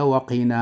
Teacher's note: فيجب أن تضع النبر على الواو وعلى النون